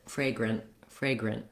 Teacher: to do that i have to keep my end very short stop the air with my tongue lifting for the t sound and don't let any air out after the word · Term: stopped t